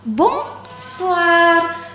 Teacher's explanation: Jadi OI di dalam bonsoir itu diucapkan wa.